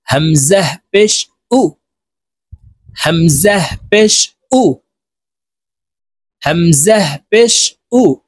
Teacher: হামজা হরফ হলকের শুরু থেকে উচ্চারণ করতে হবে, শক্তভাবে উচ্চারণ করব।